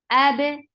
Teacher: Hamza is very sharp. For fatha, open your jaws. Attach with ba. Ba will get qalqala.